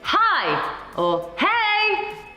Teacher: if you were trying to call someone maybe you would say hi or hey across the street and instantly that lifts your pitch